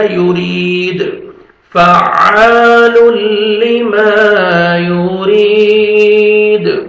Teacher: را کے نیچے کسر ہے, را کو باریک کرنا ہے اور 1 سیکنڈ را کو کھینچنا ہے, یا مد ہے, یا ساکن سے پہلے کسر ہے, اور دال جب سٹاپ کریں گے دال ساکن ہو جائے گا, ڈبل ساؤنڈ آئے گا یورید, فعال لما یورید.